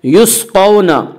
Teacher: قاف کو پر پڑھیں گے، قاف حروف مستعلیہ میں سے ہے، حروف مستعلیہ 7 ہیں جن کا مجموعہ خصہ ضغط قز ہے، جو ہمیشہ ہر حال میں پر پڑے جاتے ہیں۔